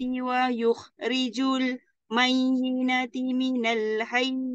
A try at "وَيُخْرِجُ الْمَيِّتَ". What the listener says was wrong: Tak ada nun. Tak ada na. Mayita je. Tak ada mayin.